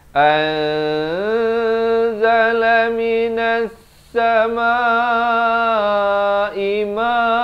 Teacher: Di sini ikhfa, samarkan dua harakat. Asalnya an kan, hamzah baris atas bertemu nun bunyi an, tapi datang zai dia jadi anzala minas samaa'i ma.